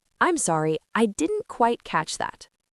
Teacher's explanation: Native speakers often drop the t sound at the end of didn't.